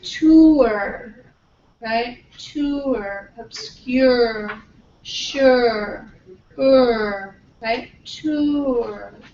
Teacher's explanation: you're moving from the oo to the schwa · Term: centering